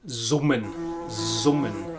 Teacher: But apart from in a few local dialects, most notably in the south of Germany and in Austria, an S at the beginning of a word before a vowel is pronounced like an English Z or Z. And that's also why in German buzzing is summen.